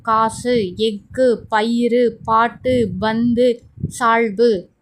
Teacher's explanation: சொல்லின் இறுதியில் வரும்பொழுது ஒரு மாத்திரைக்கு பதிலாக அரை மாத்திரை அளவை ஒளிக்கிறது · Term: குற்றியல் உகரம், குற்றியல் லுகரம்